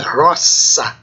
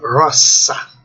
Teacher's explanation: O S, mesmo entre vogais, vai ter o som, indicar o som de sibilante surda, C. Não Z, né?